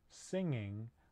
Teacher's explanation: the the ipa symbol for the n sound this is a voiced sound it's a nasal right air is flowing through the nose and it's produced at the soft palate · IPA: ŋ